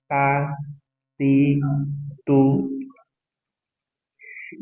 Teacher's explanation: ujung lidah dari permakan atasnya bertemu dengan gusi gigi seri atas